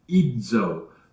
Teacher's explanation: And when you do that, when you don't just say Z, but you say idzo, it's DZ, and you can feel your tongue go up there and hit that place just behind your teeth, just behind your upper teeth.